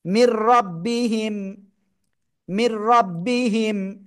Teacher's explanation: র আর লাম নুন সাকিন বা তানবিনের পরে যদি আসে তাহলে গুন্না ছাড়া মিলিয়ে পড়তে হবে